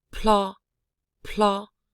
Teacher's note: the consonant blended with the L is aspirated